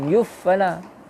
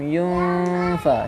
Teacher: Jadi bacaan dia adalah tengah-tengah, bukan izhar dan juga bukan idgham. Bacaan dia yunfa, standby nak sebut huruf fa. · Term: ikhfa